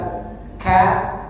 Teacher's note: Nah, ka-nya hembuskan angin keluar.